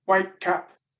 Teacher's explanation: the T has changed in sound. It sounds like k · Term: copycat consonants